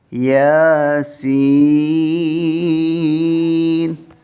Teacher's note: یا کو 1 الف کے برابر اور سین کو 5 الف تک